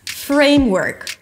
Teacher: Start with the nice strong R, round your lips